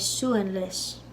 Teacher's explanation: I put a Y in the pronunciation after the L in lis, because it's a slender L because an I comes after it.